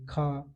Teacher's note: खा तो कंठ से आवाज निकलेगी आपकी जीभ से नहीं निकलेगी